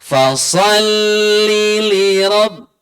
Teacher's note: Fasalli li rabb, bersambung. Fasalli li rabb, jangan dijeda, jangan dibaca panjang